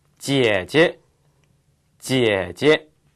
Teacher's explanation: 그런데 3성 다음에 오는 경성은 고음이 되죠.